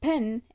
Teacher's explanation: the air flow is completely blocked at a certain point along the vocal tract and then released suddenly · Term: stops